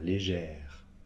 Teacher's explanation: on ouvre le E et on prononce le R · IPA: [leʒεr]